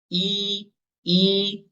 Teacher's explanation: Ulangi lagi yang i-nya suara sempitkan.